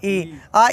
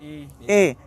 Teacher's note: आ का उच्चारण स्थान कंठ है, और ई का उच्चारण स्थान तालु है, और ए का उच्चारण स्थान कंठ तालु है। इसीलिए आ और ई जब भी मिलेंगे तो ए ही होता है, क्योंकि यही है स्थाने अंतरतमः, आप यही है उच्चारण स्थान की समानता के आधार पर वर्णों का आदेश होता है।